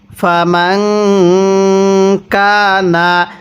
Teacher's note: এই নুন সাকিনটা আমরা গুন্নাহ করে পড়ব, কারণ এই নুন সাকিনের পরে কাফটি হলো ইকফার হরফ